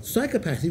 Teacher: psychopathy with a stress on the first syllable